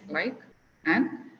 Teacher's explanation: we hardly hear the D at the end